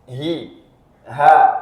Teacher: ha itu makhrajnya adalah ditenggorokkan tenggorokan bagian bawah